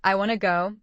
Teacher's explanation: the stressed word is go. The reduced wanna is just a weak form.